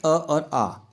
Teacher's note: कंठ में जो हमारे स्वर आते हैं वो आते हैं अ और आ